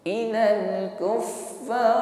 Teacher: Ilal kuffar ditutup dengan ra, ra-nya ditebalkan.